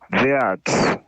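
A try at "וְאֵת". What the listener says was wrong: So again, there could be some confusion between a chet and a tav. I heard you say ve'at.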